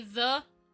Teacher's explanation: so that way the the cuz like when I say the my tongue is pretty much on like the top part of my teeth